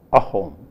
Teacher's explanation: in Assamese, if a word begins with a vowel, then it begins with a glottal stop. So you say ahom.